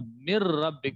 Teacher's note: اور آپ نے قاعدہ پڑھا تھا کہ نون ساکن کے بعد حروف یرملون میں سے یہاں پر را بھی آ رہا ہے، تو اب یہاں پر ادغام ہو گیا نون کا را پہ